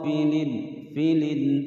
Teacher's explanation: ada kasrotain bertemu dengan huruf Ain dibaca dengan jelas karena huruf Ain adalah salah satu huruf Izhar